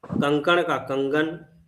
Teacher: क वर्ण अघोष है उसको घोष वर्ण हो गया है। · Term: घोषकरण